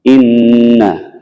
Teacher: suara yang keluar dari hidung ditahan sekurang-kurangnya selama dua harokat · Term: ghunnah